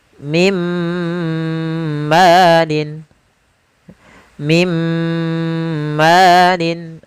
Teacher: Langsung dimasukkan ke huruf setelahnya dan ditahan suara gunnah pada huruf yang setelahnya. Kalau dia di huruf ya, ditahan di ya-nya. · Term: idgham bi gunnah